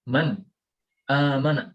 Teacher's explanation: dari kanan ke kiri dan sukun atau tanwin bertemu dengan Hamzah maka disini kita membacanya dengan harus jelas tidak mendengung